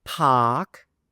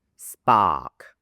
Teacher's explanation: Park is aspirated. The air comes out. Park and then spark. Spark. The air doesn't come out.